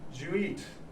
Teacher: when we have this this specific phrase with eat did you becomes even shorter it becomes jew